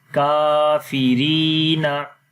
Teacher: اس سے پہلے زیر ہو تو وہاں پر لمبا کرتے ہیں. کاف کے اوپر کھڑی زبر ہونے کی وجہ سے لمبا کیا تو پڑھیں گے کافرینا، اور پورا ملا کر پڑھیں گے